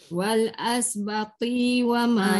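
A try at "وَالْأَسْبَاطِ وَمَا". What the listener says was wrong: Jaga ba panjang, ti pendek. Ti tak boleh panjang.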